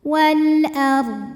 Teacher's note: huruf ro dibunyikan secara tafkhim sebab huruf sebelumnya berbaris fathah maka dibaca rnya tebal